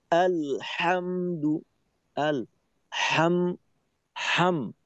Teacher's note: অধিক হালকা পাতলা নরম একটা হা। এই হামজার প্রভাবটা যেন কোনোভাবেই হার উপরে না পড়ে।